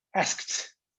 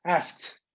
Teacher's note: So we just take the K and pronounce the T together. It's linked. Asked, the KT.